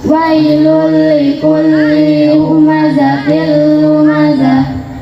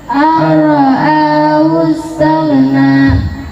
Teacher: Wa min bila gunatin filami wara, artinya bacalah idgham bila guna apabila ada nun sukun atau tanwin bertemu dengan huruf lam dan ro, maka suara nun sukun atau tanwin hilang dan langsung masuk ke huruf berikutnya tanpa dengung